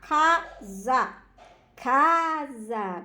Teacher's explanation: a sílaba cá foi pronunciada mais fortemente do que a sílaba sabe então isso quer dizer que a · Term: sílaba tônica